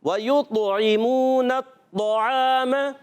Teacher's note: طو تو شدیدہ مجہورہ ہوتا ہے, سختی کے ساتھ آواز بند ہوتی ہے, اور پھر یہاں پستی اور نرمی سانس جاری نہیں ہوتا بلکہ سانس رک جاتا ہے.